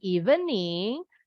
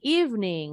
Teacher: bukan evening tapi evening huruf e yang di tengah hilang